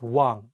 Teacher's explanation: you don't pronounce the iung at the beginning of the word. Only say the wa and pronounce the iung at the end of the word as ng.